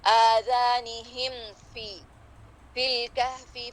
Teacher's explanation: کیونکہ میم اور فا اور میم اور واو ایک ہی مخرج سے ہیں، تو اس پہ ادغام ہونے کا اندیشہ ہے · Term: اظہار شفوی